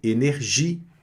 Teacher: não pronunciou o E no final